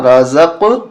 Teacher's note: را زبر را، زا قاف زبر زق، یہاں قلقلہ ہوگا، رازق، آواز ٹکرا کر دوبارہ واپس آئے گی قاف کی